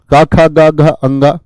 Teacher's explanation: कै वर्ग वाले जो होते हैं ये कंठ से बोले जाते हैं